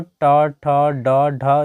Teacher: इस सभी का उच्चारण जो है याद रखिएगा ये मूर्धा की मदद से होता है